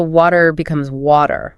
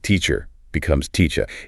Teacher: The schwa is that weak, neutral sound that's so common in unstressed syllables in English. And in many non-American accents, like British and Australian, they often don't pronounce the R sound at the end of words.